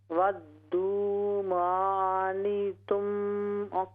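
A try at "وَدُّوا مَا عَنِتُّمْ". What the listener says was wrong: जी आइन को दुरुस्त करें। वद्दू मा अनित्तुम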